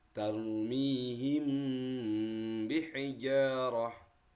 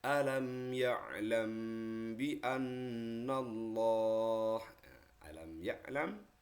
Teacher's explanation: dengan suara yang samar antara mim dan ba pada bibir kemudian ditahan kira-kira dua harakat atau dua ketukan tuk tuk tuk nah Seraya mengeluarkan suara ikhfa dalam pangkal hidung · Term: Ikhfa Syafawi